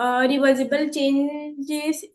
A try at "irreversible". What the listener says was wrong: इरिवर्सिबल, इरिवर्सिबल, रिवर्सिबल नहीं, इरिवर्सिबल।